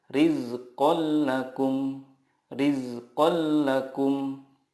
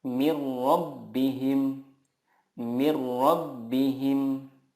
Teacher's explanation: Cara membacanya, meleburkan nun sukun ke huruf berikutnya tanpa gunnah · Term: idgham bila gunnah